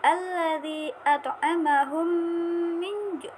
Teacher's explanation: ada mim sukun bertemu dengan mim, bertemu dengan hurufnya sama, maka dibaca gunnah, yaitu pembacanya yaitu idgham mutamatsilain ataupun idgham mimi.